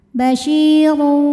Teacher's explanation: Maka huruf syin dipanjangkan dua harakat saja. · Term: mad thobi'i